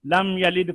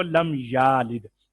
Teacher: یا کی زبر کو کھینچا کہ وہ الف بن گیا، یہ لم یلد کو لم یالد، تو یہ ہماری طرف سے ایک حرف قرآن میں زیادہ ہو گیا.